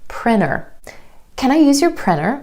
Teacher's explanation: that T just drops out with native speakers after the N sound or N sound in an unstressed syllable. The reason for this is because the N and the T t sound are both made at the ridge behind your top front teeth. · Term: vanishing T